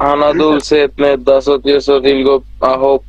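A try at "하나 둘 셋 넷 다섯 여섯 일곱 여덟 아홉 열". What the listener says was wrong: ইলগোপ ইয়দল, আপনি ভুল পড়ছেন, এই যে মাঝখানেটা বাদ দিয়ে পড়তেছেন।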